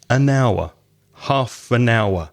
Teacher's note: the word hour begins with an H which is a consonant but it's not pronounced